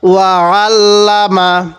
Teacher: অনেকেই আমরা কিভাবে পড়ি ওয়া আল্লামা, এটাকে হামজা পড়ে ফেলি। আমরা এই আইনটাকে হামজা পড়ব না